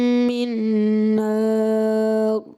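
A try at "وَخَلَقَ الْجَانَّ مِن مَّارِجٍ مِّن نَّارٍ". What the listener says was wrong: مد لازم کو آپ نے کم کھینچا, 10 میں سے 9 نمبر.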